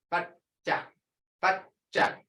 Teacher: You can't hear that D in there, but your tongue is on your palate.